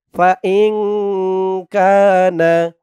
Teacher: কা জবরের পরে খালি আলিফ এক আলিফ টান